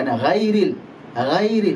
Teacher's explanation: terangkatnya pangkal lidah atau naiknya suara ke langit-langit atas sehingga dibaca tebal. Konsekuensinya huruf ghain dibaca tebal atau tafkhim. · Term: sifat isti'la